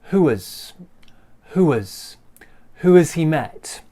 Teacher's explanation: the h disappears and we join this together and we get kind of a w sound